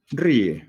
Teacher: la vocal cerrada es la vocal tónica y la otra es la vocal átona